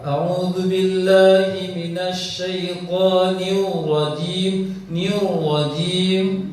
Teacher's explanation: Kesalahannya adalah membaca ro menjadi waw. Dia memunculkan bibir. Bahkan ro-nya tidak nampak.